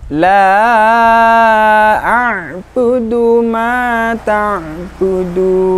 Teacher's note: Bacaan mad jaiz munfasil, panjangnya dari 2 sampai 6 harokat.